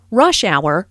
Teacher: rush hour is a compound noun with the main stress on the first word